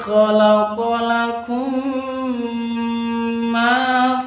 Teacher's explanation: mim sukun berjumpa dengan mim disebut idgham mimi atau idgham mislain. Jadi bacaannya dengung.